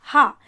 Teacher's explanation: जब हम ह बोलते हैं तो यह आप देखेंगे सीधे कंठ से आवाज आती है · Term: कंठ ध्वनि